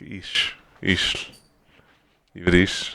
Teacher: Some are a little softer with their ch sound and say like ish